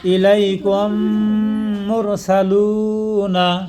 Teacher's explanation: মিম সাকিনের পরে মিম আইলেই ওই মিমের সাথে মিল করে গুন্না করে পড়া লাগবো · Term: ইদগামে সফবি